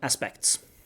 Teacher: You can drop the T, aspects through something called elision.